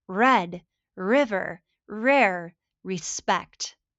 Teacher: curling your tongue slightly back without touching the roof of your mouth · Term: R sound